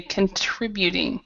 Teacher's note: So the stress is in the trib part, contributing, and then the last part, of course, as well.